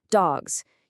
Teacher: you can feel that buzz. That's a voiced Z sound.